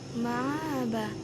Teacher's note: ada hamzah yang dilemahkan atau dibaca taksil menjadi ma'aba